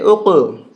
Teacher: قلقلہ کریں گے، جھٹکا دیں گے